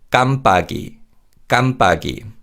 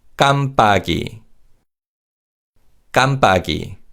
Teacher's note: 비읍 in 박 is pronounced as a tense consonant